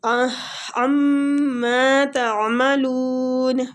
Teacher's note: میم مشددہ غنہ کریں گے اور مد عارض ہو رہی ہے آگے